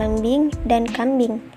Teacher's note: fonem vokal I juga memiliki alofon I besar seperti pada lembing dan kambing